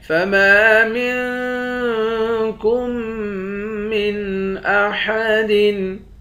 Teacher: فَمَا مِنْكُمْ مِنْ أَحَدٍ، میم کے بعد الف ہے، الف حروف مدہ ہے، ایک الف کی مقدار کھینچ کر پڑھتے ہیں، میم کو نون کے ساتھ ملا کر نون پر اخفا کریں گے، کاف کو میم کے ساتھ ملا کر میم پر ادغام کریں گے، یعنی تشدید والے میم کے ساتھ ملا کر پڑھیں گے، جزم والے میم کے ساتھ ملا کر کاف کو نہیں پڑھیں گے۔